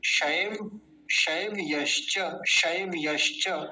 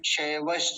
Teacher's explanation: य का विशेष ध्यान रखेंगे क्योंकि इसको बोलने में कई बार य गायब हो जाता है शव ऐसे बोल देते हैं लोग ये गलत है शैव्य शैव